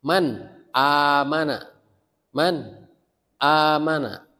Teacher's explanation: Ya, kalau ada nun mati atau tanwin bertemu huruf idhar yang 6 Pak ya. maka itu dibacanya jelas. Jelas bunyi tanwinnya, bunyi nun matinya.